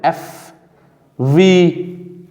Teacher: Lip and teeth, they produce obstruction and the process of friction takes place. The friction is created at the lips and the teeth, where a narrow passage permits the air to escape. The F is voiceless and the V is voiced. · f and v are labiodental f v labiodental lip and teeth they produce obstruction and the process of friction takes place the friction is created